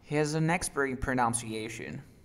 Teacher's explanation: es expert y luego le agregan el in, lo juntaron, experin. Experin, ok.